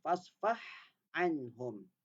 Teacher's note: Ha dengan ain sama makhraj tau dia. Ha dengan ain. Tengah-tengah halqum. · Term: huruf halqiyah